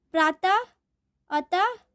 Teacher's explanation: विसर्ग, इसका उच्चारण ह की तरह होता है।